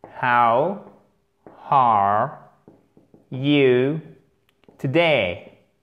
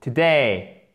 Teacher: Accent tonique sur la today. Deuxième, seconde syllabe